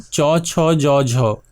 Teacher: এগুলি গলার থেকে উপরে মুখের দিকে উঠে এসে তালুতে স্পর্শ হয়ে উচ্চারিত হয়। গলার উপরে দুই নম্বর অবস্থানে রয়েছে তালু।